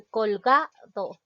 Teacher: Es una palabra grave porque la mayor fuerza de voz recae en la penúltima sílaba, que es ga